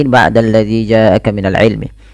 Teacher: Pada lafal ja'aka ini harus dipanjangkan 4 harokat sebagaimana ahwa, hukumnya sama, yaitu mad wajib muttasil.